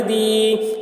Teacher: ولی، دال یا زیر دی، یا ساکن سے پہلے زیر ہے، یا مدہ ہوا، اس لیے یا مدہ کو ایک الف کے برابر کھینچ کر پڑھیں گے